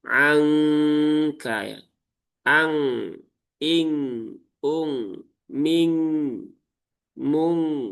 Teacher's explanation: Bunyi gunnahnya ya, bunyi dengungnya itu adalah bunyi eng ya. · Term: ikhfa ab'ad